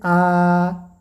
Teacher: जिन स्वरों के उच्चारण में मुख पूरा खुल जाता है उसे विवृत स्वर कहते हैं। जैसे आ बोला जाए तो विवृत स्वर है।